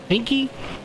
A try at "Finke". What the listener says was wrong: You have to say the E that is pronounced in his name, Scott Finke. But it wasn't Scott Fink, Scott Finke. Like Stinky Finke.